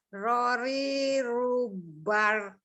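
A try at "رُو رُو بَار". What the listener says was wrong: Ro-nya panjang dong, kan ada alifnya.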